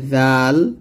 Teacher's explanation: জাল যখন উচ্চারণ করবেন জিহ্বার আগা উপরে দাঁতের আগার সঙ্গে লাগিয়ে উচ্চারণ করবেন